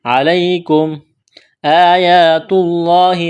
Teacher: لفظ اللہ کے نام سے پہلے پیش ہے، لفظ اللہ کے نام کو موٹا کرنا ہے ، وفیکم، یا مدہ ہے، میم ساکن کے بعد را ہے،